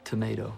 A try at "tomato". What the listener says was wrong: Is that right? It's the A.